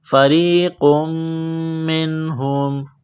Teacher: نون ساکن کے بعد ہا ہے حروف حلقی ہے تو نون ساکن پر غنہ نہیں کریں گے · میم مشدد ہے غنہ کریں گے